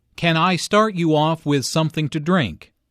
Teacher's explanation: Notice how the question starts with can. Since this is a yes-no question, the intonation rises at the end. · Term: rising intonation